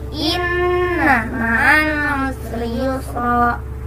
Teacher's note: Jadi yang pertama di sini juga ada 3, yaitu yang pertama guna karena nun bertanda tasydid dan cara membacanya dengan dengung serta ditahan 3 harokat